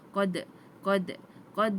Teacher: qalqalah sughra, yang mana qalqalah kecil. Jadi lantunan kita hanyalah satu harakat saja.